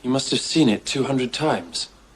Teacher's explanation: in spoken English it will sound like must ah or must of